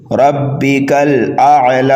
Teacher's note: ربک الاعلی، اور کھڑا زبر کو جو ہے ایک الف کے برابر کھینچ کر کے پڑھا جاتا ہے